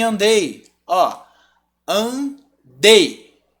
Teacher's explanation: andei o i some totalmente